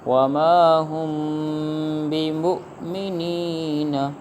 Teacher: غنہ ہوگا کیونکہ میم ساکن کے بعد با آ گیا ہے